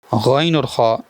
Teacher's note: हैं गन और खा यह भी हरूफ अलकिया में से हैं हल्क के ऊपर वाले हिस्से से अदा होते हैं